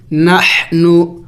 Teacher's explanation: ح حروف حلقی میں سے ہے، حلق سے ادا کریں گے، ح وسط حلق سے یعنی حلق کے درمیانی حصے سے